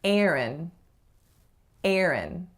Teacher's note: The first vowel is the vowel air, though I guarantee you'll hear some variation of that specific vowel depending on which region you're living in. And the second syllable is schwa n, or a syllabic n.